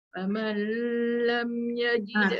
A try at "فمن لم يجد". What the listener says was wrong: Tu jangan lama sangat aja. Masuk lam.